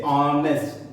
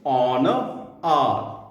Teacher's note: There are words that begin with a consonant, but the consonant sound is silent, such as honest.